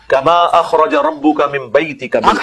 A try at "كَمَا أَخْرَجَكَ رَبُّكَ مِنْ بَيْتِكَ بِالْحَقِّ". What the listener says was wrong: أخرج ربك نہیں ہے بیٹے أخرجك کاف بھی ہے نا اس میں أخرجك ربك أخرجك ربك